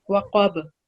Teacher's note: When you're pausing, you're going to ignore the fatha and take it as if there's sukoon. And ba with sukoon, whenever it's present, we produce a jerking sound. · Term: qalqala letter